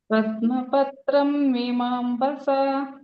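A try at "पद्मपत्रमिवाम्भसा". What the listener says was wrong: ಪದ್ಮಪತ್ರಂ ಇವಾಂಭಸ ಪದ್ಮಪತ್ರಂ ಇವಾಂಭಸ. ಮೀ ಅನ್ನೋದು ಅಲ್ಲಿಗೆ ಮಾ ಅಂತ ಅರ್ಧ ಮಾ ಸೇರ್ಕೊಳ್ಳುತ್ತೆ, ಈ ಕಡೆ ಈ ಅಂತ ಆಗೋಗುತ್ತೆ. ಇವಾಂಭಸ ಹಂಗೆ ಹೇಳ್ಬೇಕು. ಇಲ್ಲೇ ಕಂಟಿನ್ಯೂಸ್ ಆಗಿ ಹೇಳ್ಬೇಕು. ಅಲ್ಲಿ ಪದ್ಮಪತ್ರ ಮೀವಾಂಬಸ ಅಂತ ಹಂಗೆ ಹೇಳ್ಬಾರ್ದು. ಒಂದೇ ವರ್ಡ್ ಆಗಿ ಹೇಳಿ.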